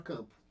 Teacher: o som sai pela boca e pelo nariz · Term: dígrafo vocálico